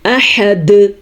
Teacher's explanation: ہا کی مد ادا کرنی ہے. احد, دال پہ قلقلہ کرنا ہے اور ہا کے مخرج کا بھی دھیان رکھنا ہے.